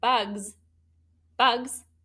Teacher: when this s is a suffix at the end like in the word bugs bugs it sounds like a z as well